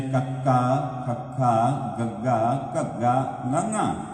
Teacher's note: ਤੇ ਕੱਕਾ ਜਦੋਂ ਕਹਾਂਗੇ ਜੀਵ ਦਾ ਪਿਛਲਾ ਹਿੱਸਾ ਤਾਲੂਏ ਦੇ ਉੱਪਰ ਲੱਗੇਗਾ। ਇਦੋਂ ਜਿਉਂ-ਜਿਉਂ ਆਪਾਂ ਅਗਲਾ ਅੱਖਰ ਪੜ੍ਹਦੇ ਜਾਵਾਂਗੇ ਤਾਂ ਜੀਵ ਥੋੜੀ ਥੋੜੀ ਪਿੱਛੇ ਨੂੰ ਟੱਚ ਹੁੰਦੀ ਜਾਏਗੀ